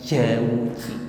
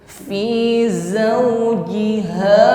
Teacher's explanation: Ada bunyi desis di situ, jangan diucapkan seperti huruf jim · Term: safir